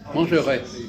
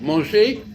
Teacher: mangerai, on prononce le R, et manger, on ne prononce pas le R. Donc il est plus court.